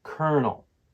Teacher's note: the word kernel has two syllables the word stress falls on the first syllable